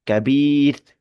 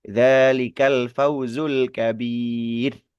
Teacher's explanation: Nah, kasrohnya itu yang menentukan bahwa nanti huruf ro yang disukunkan karena wakaf itu hukumnya adalah tipis, tarkik